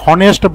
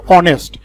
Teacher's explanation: আমরা কিন্তু এখানে এটাকে হনেস্ট বলি না, আমরা বলি এটাকে অনেস্ট। এইখানে যে এইচটি রয়েছে সেই এইচ এর পরে দেখো একটা ভাওয়েল ও রয়েছে, এইচটা উচ্চারিত না হয়ে সেই ওটা উচ্চারিত হচ্ছে।